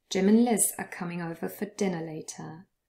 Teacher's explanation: and becomes un. And yes, we even lost the d at the end. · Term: elision